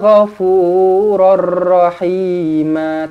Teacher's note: tanwin tak selari bertemu dengan ra, idgham bila gunnah, tidak dengung